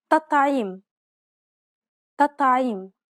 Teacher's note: It's as though both of the T's were dark. It's actually easier to pronounce both of them dark as opposed to pronouncing one soft and one dark.